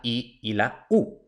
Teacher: las vocales altas, que son la I y la U. Para eso, la lengua sube bastante